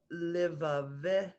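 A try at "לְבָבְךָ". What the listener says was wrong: Levavcha. There's a shva under the second vet.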